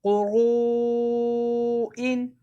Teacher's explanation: حروف مدہ کے بعد حمزہ اسی کلمے میں مد متصل 2 الف کی مقدار کے برابر. قاف پیش قو را واو پیش رو قرو حمزہ 2 زیر ان قروئن.